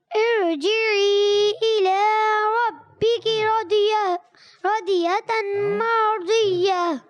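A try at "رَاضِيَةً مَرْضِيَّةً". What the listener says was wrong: راضیۃ ایک الف کھینچ کر بھی ادا کریں گے.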